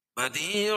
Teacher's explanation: بدیع یا ساکن سے پہلے زیر ہے تو یا مدہ، اس کو ایک الف کے برابر کھینچ کے پڑھیں گے